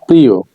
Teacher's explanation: শব্দের শেষে অন্ত্যেষ্টি অয়ের আগে ই কিংবা এ ধ্বনি থাকলে সংযুক্ত অয়ের উচ্চারণ ওকারের মতো বা সংবৃত্ত হয়